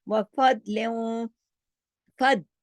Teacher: दाद को जमाओ के साथ और मोटा करके पढ़ना है